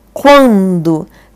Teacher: Porque eu vou da semivogal para a vogal, do mais forte para o mais fraco. Só que eu nasalizei, né, gente? Eu falei assim, ó, quando, tá nasalizado. Então, eu tenho um ditongo crescente nasal.